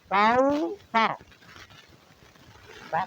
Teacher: زبان کی نوک سامنے والے اوپر کے جو بڑے دو دانت ہیں ان کے کنارے پہ لگائیں گے، تو یہاں سے سا ادا کریں گے، کاؤ سا۔